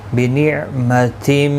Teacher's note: تنوین کے بعد یرملون کا میم آیا ہے، ادغام مع الغنہ ہوگا، گنہ کے ساتھ پڑھیں گے